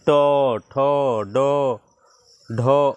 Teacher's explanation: ट वर्ग में का उच्चारण मूर्धा से होगा